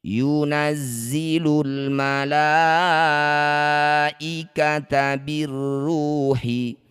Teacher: Jadilah bacaan namanya mad wajib muttasil. Cara bacanya la yang bertanda layar panjangkan enam harakat atau enam ketukan.